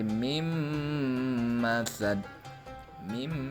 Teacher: nun mati bertemu dengan mim yang berharokat fathah ya yang dibacanya berarti meleburkan nun mati menjadi huruf mim